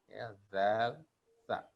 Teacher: Kemudian ada bunyi yaitu baina asnani. Interdental. Itu zal dan tha. Ini tidak ada dalam bahasa Indonesia.